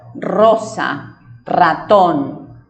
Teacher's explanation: Generalmente cuando la R está al inicio de la palabra es una R vibrante, como si fuera con un sonido de motor.